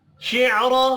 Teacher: नाहुश नून के ऊपर खड़ी ज़बर है, एक अलिफ के बराबर खींच कर पढ़ेंगे। शिअरा रा को ज़बर की वजह से पुर पढ़ना है